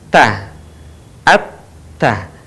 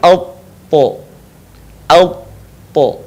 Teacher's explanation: tho melafalkan huruf ta posisi lisannya terbuka ta At Ta sementara ketika kita melafalkan huruf tho posisi lidah bagian pangkal terangkat bagian depan pun menutup bagian langit-langit